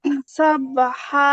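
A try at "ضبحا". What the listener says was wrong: আপু, আপু এটা সবে হবে না, এটা দদ হবে। দবে হ্যাঁ।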